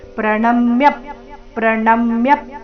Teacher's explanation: ಪ್ರಣ ಮೇಲೆ ಆಘಾತ ಯ ಮೇಲೆ ಸಹ ಆಘಾತ ಬರಬೇಕು